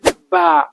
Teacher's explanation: اس کو ہونٹوں سے پڑھنا ہے، دوسری بات ہونٹ کے تر والے حصے سے پڑھنا ہے، اور تیسری بات اس کو باریک پڑھنا ہے، پتلا پڑھنا ہے